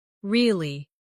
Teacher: With a falling tone to show you don't believe someone.